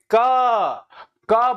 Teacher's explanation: क क बोलते हैं तो उच्चारण स्थान कहां से जोड़ लगता है कंठ से